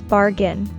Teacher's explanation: We stress the first syllable in bargain.